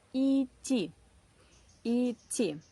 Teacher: We write it ИДТИ, but we do not pronounce this d. It is silent.